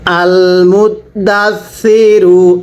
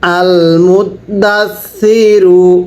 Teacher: সাটা উচ্চারণের সময় জিহ্বাটাকে দাঁতের আগের সাথে লাগিয়ে পড়বেন